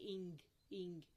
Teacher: Soft palate जो है वो फर्म कांटेक्ट बनाएगी बैक ऑफ द टंग के साथ। आप बोल के देखिए, इंग इंग, आपको पता है बैक ऑफ द टंग उठ रही है, बैक ऑफ द टंग और विलम का फर्म कनेक्शन हो रहा है और नाक से हवा निकल रही है, इसलिए हम इसको विलम नजल बोलेंगे या विलर नजल बोलेंगे।